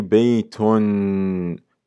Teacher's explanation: the extra noon that is added at the end of the word which is pronounced yet not written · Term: tanween